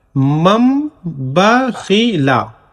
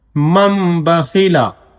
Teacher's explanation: میم نون زبر من، با زبر با، خا زیر خی، لام زبر لا، مم بخیلا۔ یہاں پہ اقلاب کا قاعدہ لاگو ہوگا کیونکہ نون ساکن کے بعد با آ گیا ہے، تو نون ساکن کو میم سے بدل کر پڑھیں گے